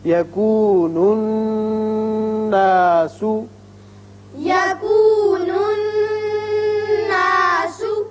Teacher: نون مشدد ہے، غنہ کریں گے